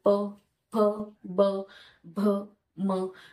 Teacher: आमचं जेव्हा उच्चारण होतं त्यावेळेला ओट ओटांना लागतात दोन्ही पण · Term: ओष्ठ्य